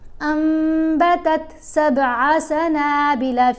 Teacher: یعنی جب آپ نے دیکھا نون ساکن یا نون تنوین کے بعد حرف با ہے، اب آپ نے نون کی آواز کو میم کی آواز میں بدل کر پڑھنا ہے. ساتھ یہ میم لکھی ہوئی بھی ہوتی ہے تو اس سے ہمیں آسانی بھی ہو جاتی ہے سمجھنے میں. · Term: قلب